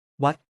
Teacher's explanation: The short vowel sound in วัด meaning temple is pronounced like ah in father.